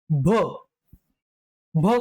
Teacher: ब वर्णामध्ये जेव्हा आपण ह मिसळतो तेव्हा आपल्याला मिळत भवर्ण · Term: महाप्राण